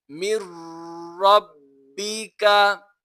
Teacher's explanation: یہاں پر نون ساکن کے بعد را حروف یرملون میں سے آ رہا ہے، یہاں پر اظہار ہو رہا ہے، تو را اور لام پر غنہ نہیں کریں گے ہم